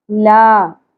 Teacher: الف حرف مدہ ہے، ایک الف کے برابر کھینچیں گے